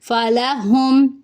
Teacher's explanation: میم ساکن کے بعد حمزہ آ جائے تو وہاں پہ ہم میم کی آواز کو ظاہر کریں گے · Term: اظہار